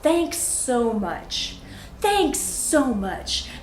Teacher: the S on the end of thanks just blends easily into so.